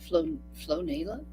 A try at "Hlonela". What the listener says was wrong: No, H. Hlonela. Hlonela.